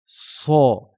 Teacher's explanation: le SAD va correspondre à un S mais qui va être grave qui va donner un un une une un son grave sa